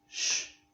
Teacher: from the center of Argentina up to the south, we say it sh, as in shower or show